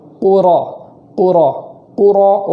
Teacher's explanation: قاف کو ادا کرتے وقت پیش کی وجہ سے وہاں ہونٹ گول کریں گے، پھر جب را ادا کریں گے تو ہونٹ واپس چلے آئیں گے اور بغیر ہونٹ گول کیے را ادا ہوگی۔